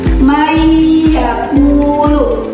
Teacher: Jadi dibacanya dileburkan atau dimasukkan dengan adanya sedikit dengungan.